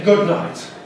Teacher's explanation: We go straight from /d/ to /n/. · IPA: [ˈgʊd ˈnaɪt]